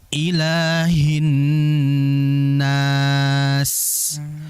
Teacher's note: Ha di situ ada sifat hamas, ya. Maka jelaskan hamas pada ha.